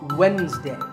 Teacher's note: It's Wednesday. The D is silent. Sometimes it's pronounced as Wednesday, but the proper way to say it is Wednesday.